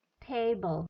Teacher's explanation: vowel silabel pertama lebih tinggi daripada silabel kedua